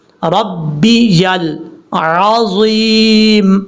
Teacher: آپ کو سمجھانے کا طریقہ بتاتا ہوں، یہ دیکھیں ربی، را بعد بر رب بازر بی، ربی یا لام زبر یل، ربی یل عظیم، یا کو کلیئر کرنا ہے، لام کے بعد عین کو کلیئر کرنا ہے، عین کے بعد ضا جو فل موت پڑھا جاتا ہے اس کو کلیئر کرنا ہے